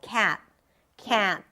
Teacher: when you pronounce the a sound, make sure you don't allow too much air to come out through your nose. You don't have a nasal voice, but with the a sound, you do get to some sound comes out. · You don't have a nasal voice, but with the a sound, you do get to some sound comes out. It's very common with the a sound to make it nasal